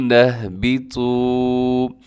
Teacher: تو کو لمبا کرنا ہے کیونکہ واو یہاں پہ مدہ ہے، واو ساکن سے پہلے پیش ہو، واو مدہ ہوتی ہے۔ · اس میں کیا ہے کہ آپ نے طا کو موٹا پڑھنا ہے